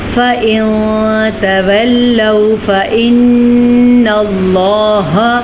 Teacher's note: फ तव फ इन अल्लाह फ देखिए मैंने यहां पे नून की आवाज को छुपाया है और लंबा भी किया यानी कि गुना भी किया है